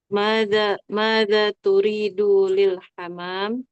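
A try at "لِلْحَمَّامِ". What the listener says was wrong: Hammam bertasdid.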